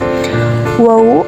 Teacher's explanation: suara huruf ini keluar dari antara kedua bibir bibir atas dan bawah bibir terbuka saat mengucapkannya